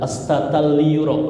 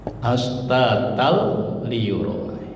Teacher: Jadi fathah ini melebur ke lam, tidak gunah ya. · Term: idgham bila gunah